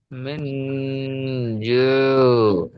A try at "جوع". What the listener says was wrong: হ্যাঁ, আইন আছে, গলার মাঝখানে নিয়ে যান শেষে। জু।